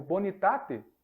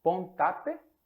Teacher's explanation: essa vogal anterior pré tônica ela costuma cair